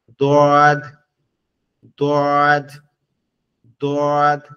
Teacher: জিহ্বার শেষ অংশ উপরের দাঁতের সঙ্গে লাগবে। জিহ্বার গোড়া উপরের মাড়ির দাঁতের গোড়ার সঙ্গে লাগবে, লেগে উচ্চারণ হবে গালটা একটু বাঁকায়, অর্থাৎ জিহ্বাটা ওখানে লাগাইতে হলে গালটা তো বাঁকাইতে হবে।